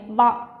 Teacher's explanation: చూడండి వ అనేది ఏమవుతుంది అంటే మనకు దంత్యోష్టం అవుతుంది వ అని పలకండి ఎలా ఉంది పళ్ళు వచ్చి మన పెదాలు తాకుతున్నాయి వ ఓకే ఈ విధంగా మనం వ అనేది ఏమవుతుంది అంటే దంతోష్టం అవుతుంది